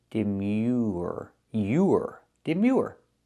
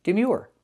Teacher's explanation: With this word, we see the y sound plus the oo, like in food, and the R.